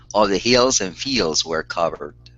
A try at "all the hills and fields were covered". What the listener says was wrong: give me a short I on Hills instead of heels